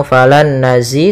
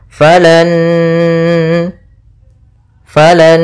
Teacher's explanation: Nun yang pertama masuk kedua sambil ditahan gunahnya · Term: idgham gunah